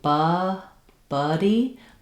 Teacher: So when I'm saying buddy, my tongue is resting flat at the bottom, but I'm not as open. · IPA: /ʌ/